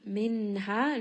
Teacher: Ha is going to be a two count madd.